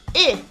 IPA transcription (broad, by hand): ɪ